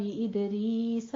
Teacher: وَاذْكُرْ فِي الْكِتَابِ إِدْرِيسَ إِنَّهُ كَانَ صِدِّيقًا نَبِيًّا. ادریس میں دال کے پر قلقلہ کرنا ہے اور را یہاں پہ باریک ہو جائے گی